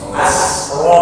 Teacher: Lanjut kalimat berikutnya. Rohnya tafkhim, jangan sampai sinnya terpengaruh dengan tafkhimnya roh.